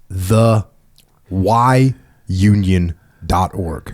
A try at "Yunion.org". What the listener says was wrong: it's pronounced Union it's pronounced Union but I want to make Y is silent